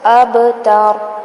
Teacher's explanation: با پہ کلکلا کریں گے، ہلائیں گے اس کو